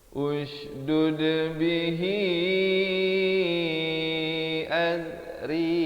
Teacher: Ri di sini dibaca nipis 2 harakat.